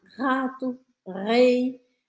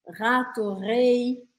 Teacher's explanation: a gente não vai usar a ponta da língua mas a gente vai usar o fundo da garganta · forçando um pouco essa vibração aqui atrás na garganta sem usar sua língua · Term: francês R